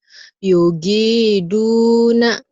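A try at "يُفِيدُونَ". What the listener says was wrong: Hei, bukan gin tapi fa. Kok Yogi? Yufiduna.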